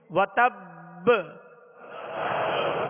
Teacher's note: اور اس کو جب یہاں وقف کریں گے مشدد حرف پر تو اس کو مزید جو ہے قلقلہ واضح ادا ہوگا, یعنی وتب با کی آواز واضح ہوگی. وتب حرکت نہ پڑے بلکہ ساکن ہی ادا ہو اور با کی آواز جو ہے لوٹ کر آئے, یعنی اس میں جنبش ہو.